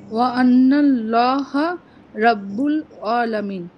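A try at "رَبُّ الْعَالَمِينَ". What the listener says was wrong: আইনের উচ্চারণটা ভালো হচ্ছে না।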